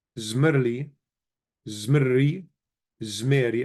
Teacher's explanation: So the resh sort of swallows the lemad. So zmerli becomes zmerri, and then the vowel is lengthened and it becomes zmeri.